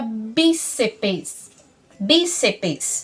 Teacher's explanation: corresponder as paroxítonas do nosso português cujo acento cai na penúltima sílaba